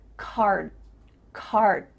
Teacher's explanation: You're not actually making a D sound, but your mouth is making that shape.